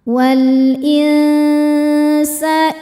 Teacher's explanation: Cara baca nun sukunnya ini adalah dibunyikan samar-samar menuju sin kemudian dengungkan. Dengung dan kesamarannya sama besar untuk sin ini karena sin ini makhrajnya tidak terlalu dekat juga tidak terlalu jauh dari nun.